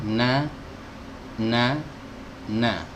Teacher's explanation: keluarnya dari ujung lidah ditempelkan dengan gusi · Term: huruf nun